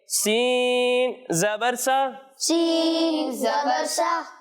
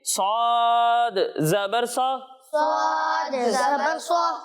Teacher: سین کو ہم باریک پڑھیں گے اور صاد کو موٹا کر کے پڑھیں گے کیونکہ صاد حروف مستعلیہ میں سے ہے، ٹھیک ہے؟